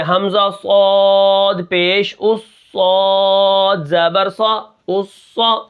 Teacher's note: اس کے بعد صاد کو ہم موٹا کر کے پڑھیں گے